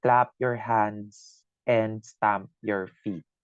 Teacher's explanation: the vowel sound ah is being repeated Thrice